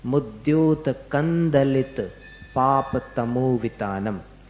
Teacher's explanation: दलित का द है, तो फिर वो बिंदी का जो उच्चारण है वो उसमें द में जाकर के मिल जाना चाहिए। म बोलोगे तो नहीं मिलेगा। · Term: अनुस्वार